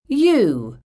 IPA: ju: